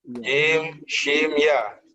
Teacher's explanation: Di bawahnya sedikit ada huruf kaf. Di tengah lidah ada huruf jim, shin, ya.